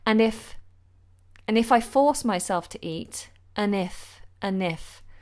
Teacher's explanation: The problem is that I just don't feel hungry when I first wake up. And here I tend to use the weak form because what I do is take away the D